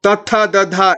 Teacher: The next one is the dantyaha. They come from the teeth region. They are called as the dentals